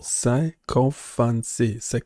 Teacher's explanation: Close, but it's sycophancy. Stress on the first syllable.